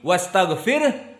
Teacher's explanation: di saat wastagfir disukunkan Hnya karena tidak dibaca wastagfirhu tapi wastagfir Hnya harus hams